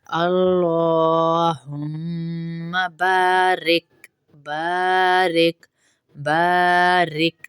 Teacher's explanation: اب اس میں اگلی غلطی یہاں پر دیکھیے کیا پڑھتے ہیں ہم پڑھ دیتے ہیں بارک، بارک، اللہم بارک، بارک نہیں ہے یہ، اس کو الف کو کھینچیں گے کیونکہ الف مدہ ہے